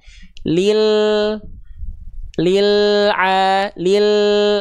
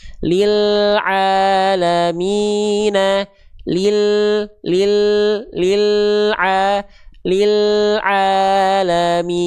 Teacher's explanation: jadi dia enggak mantul karena dia diseret dulu, dia disimpangkan dulu makhraj huruf lamnya lil jadi dia enggak langsung lepas lil alamina lil alamina nah Itu salah satu cara untuk teman-teman yang suka kebiasaan lamnya tuh buru-buru lepas sehingga dia memantul. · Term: lam sukun